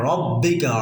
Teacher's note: র এটা মোটা, র এর উচ্চারণ হলো জিব্বার মাথা জিব্বার আগার উল্টো পিঠ তার বরাবর উপরে তার সঙ্গে লাগিয়ে র।